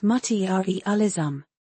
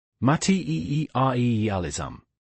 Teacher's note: The emphasis is on the second syllable.